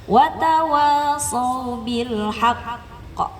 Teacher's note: Karena ada tasdid tahan dulu sebentar.